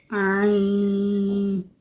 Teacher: Mostly لوگ اس کو ناک سے ادا کرتے ہیں جو کہ غلط ہے۔ عین وسط حلق سے ادا ہوتا ہے۔